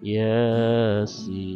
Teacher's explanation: Ya-nya itu huruf dari mukhaffaf, sinnya itu huruf dari musyabba. Maka ya-nya itu 2 harokat, sinnya itu 6 harokat.